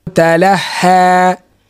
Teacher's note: huruf ha makhraj secara teori dia disepakati oleh ulama dan memang dia dikesan keluar daripada leher. Pangkal leher talahaha.